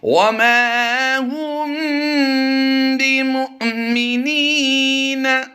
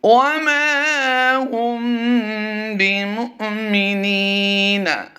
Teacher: اگر یہاں پر واو ساکن کو شمار کیا جائے تو پھر جھٹکا نہیں آنا تھا، یہاں پر واو مدہ ہو جاتا ہے، یعنی میم واو پیش منہ کو ہم لمبا کر دیتے، تو یہاں پر حمزہ ساکنہ کا ہی اصول ہے، حمزہ ساکنہ کے ساتھ ہی پیچھے ملا کر پڑھا جائے گا اور اس کو جھٹکا دے کر پڑھیں گے